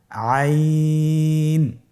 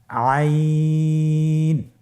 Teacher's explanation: আর হরফটি কন্ঠনালীর মধ্যখান থেকে উচ্চারিত হয়।